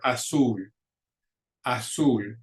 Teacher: Azul ends in an L, which is a consonant other than N or S. And so the stress goes on that last syllable